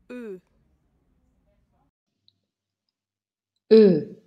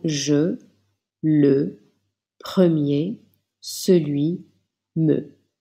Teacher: Les lèvres sont arrondies et la langue est en avant.